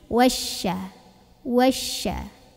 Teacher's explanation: Dari wa masuk ke syin. Syinnya sebarin angin ya. Punya sifat namanya tafasi.